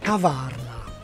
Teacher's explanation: The Czech for cafe is kavárna, and like almost all Czech words, it's stressed on the first syllable. So the acute accent indicates not stress, but vowel length, kavárna. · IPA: [ˈkavaːrna]